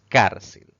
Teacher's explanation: si separamos en sílabas notamos que tiene dos sílabas sin embargo al pronunciar esta palabra la mayor fuerza de voz recae en la penúltima sílaba contando derecha a izquierda eso la convierte en una palabra grave